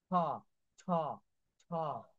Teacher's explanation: দেখেন জোরে একটা বাতাসের ঝাপটা আসে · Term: অ্যাসপিরিয়েটেড সাউন্ড